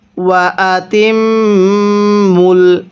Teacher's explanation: ওয়া আতিম মুল, হ্যাঁ তামিম জের তিম মিম লাগবে আবার এই লামের সাথে, তাহলে ওয়া আতিম মুল। এই মিমের মধ্যে আমরা গুনাহ করব, কারণ মিমে নুনে তাসদিদ গুনাহ করা ওয়াজিব